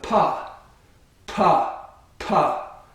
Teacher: the vocal cords do not vibrate until the air is released